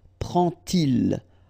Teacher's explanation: you won't pronounce it like D to make the liaison, but you will pronounce it like T. And so you will get prend-il.